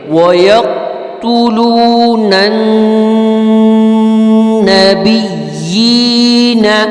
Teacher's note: یقتلون کے نون کو ہم نبیین کے نون کے ساتھ ملا کر پڑھیں گے